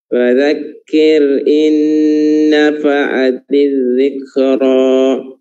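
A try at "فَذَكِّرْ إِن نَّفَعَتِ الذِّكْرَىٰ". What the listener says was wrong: Dzikra, yusra. Ya, itu fathahnya, madnya di akhir jangan dikasih sangkut ya, jangan disangkut seakan-akan ada hamzah sukun di situ, tapi dilepas. Dzikra bukan, tapi dzikra. Tadi di awal-awal sudah begitu, tapi pas akhir-akhir seakan-akan ada hamzahnya.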